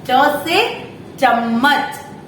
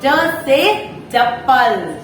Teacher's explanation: हमारी जो जीभ होती है वो हमारे ऊपर के जो तालव्य होता है उसको टच करती है, इसलिए ये तालव्य व्यंजन कहलाते हैं।